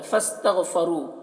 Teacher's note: गैन को पुर पढ़ना है और इसमें कलकला ना होने पाए इसका ख्याल रखना है। रू में रॉ को पुर पढ़ना है और यहाँ पर वाव मद्दा है तो एक अलिफ के बराबर खींच कर पढ़ेंगे।